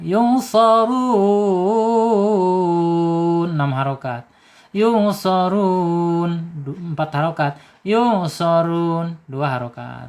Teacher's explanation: Yusarun mad alilis sukun ya, panjangnya 2 boleh, 4 boleh, 6 harokat juga boleh ya. Dalam satu surah harus konsisten kita.